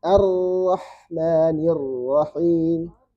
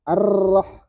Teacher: Jadi di awal getar sisanya bunyi suara. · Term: takrir